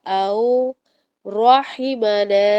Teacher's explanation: او رحمنا، رو کو موٹا کریں گے، ہا کو حلق سے ادا کریں گے